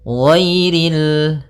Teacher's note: Nah, ghainnya tebal. Ghairil, tapi tidak terlalu tebal sampai kepada huruf shad dan huruf dhad